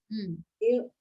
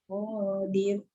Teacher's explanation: Dir bila kita berhenti dia jadi nipis. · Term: tarkik